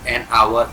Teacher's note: But since its sound it starts with vowel because H is not pronounced here. That's why we use here an.